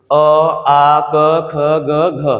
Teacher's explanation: इसका उच्चारण कहां से होता है? कंठ से होता है।